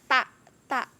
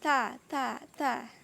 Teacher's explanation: ujung lidah menyentuh gusi atas